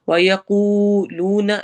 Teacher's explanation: وَيَقُولُونَ واو مدہ دو جگہ پہ ہے، دونوں کو ایکولی لمبا کرنا ہے. وَيَقُولُونَ ایسے نہیں پڑھنا، بالکل سیم رکھنا ہے.